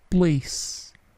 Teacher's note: Place, P-nya tidak plosif.